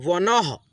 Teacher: ठीक है, जैसे कि यहाँ पे देखिए व न में अह की मात्रा है ना, तो हम लोग अह की मात्रा को आधा ह के रूप में उच्चारण करते हैं